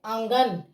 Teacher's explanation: नाक और मुंह दोनों से आवाज आ रही है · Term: अनुनासिक